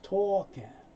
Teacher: No sound for the L, so it's talking. Often the G sound is not made, so the N moves over.